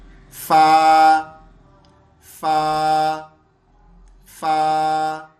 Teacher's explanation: سامنے اوپر کے 2 دانتوں کی نوک سے نچلے ہونٹ کا درمیان ملا دیں